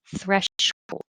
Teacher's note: touches it'll sound like thr without touching thread thresh thresh so there's a little delay between pulling the tongue back in and curling it back for the r